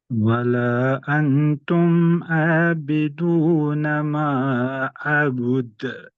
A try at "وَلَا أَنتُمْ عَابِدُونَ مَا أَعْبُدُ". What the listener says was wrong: आइन को लाइए, अबुद